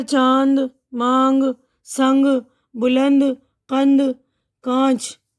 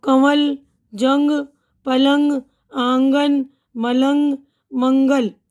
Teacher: तो इनमें 2 तरह के नून गुन्ना आते हैं। तो कुछ में तो सिर्फ हम जो है नाक की आवाज़ लेते हैं, कुछ में जो हल्की नून की आवाज़ आती है